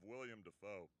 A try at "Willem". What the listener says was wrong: It's not William, it's Willem.